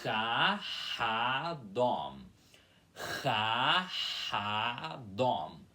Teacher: Primeiro vocês fazem Chah, começando pelo som do X, que é forçado com a garganta, e depois o A aspirado · Vocês vão ter que fazer a aspiração depois do som desse A.